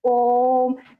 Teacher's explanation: इसको बोलने में अधिक समय लगता है। यानी तीन मात्रा के बराबर समय लगता है। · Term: त्रिमात्रिक स्वर